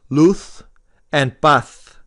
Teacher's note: in spain those last two words would be pronounced luth and path because the z and the sea in spain are pronounced like a th